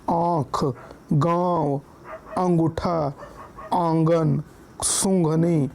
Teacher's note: ठीक है अब उसके बाद देखिए अनुस अनुनासिक और चंद्र बिंदु जिसका उच्चारण मुंह और नाक दोनों से होता है उसे अनुनासिक करते हैं